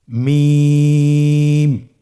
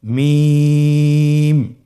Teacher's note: দুই ঠোট চেপে ধরে আমরা উচ্চারণ করব।